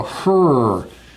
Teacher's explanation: notice again with the r my lips are going out